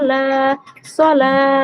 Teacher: খাড়া যাবরকে আলিফ মাদ্দার মতো এক আলিফ পরিমাণ টেনে পড়া